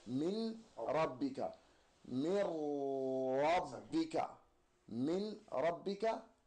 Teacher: we're going to take the noon this time and we're going to put it inside of the ra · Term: idgham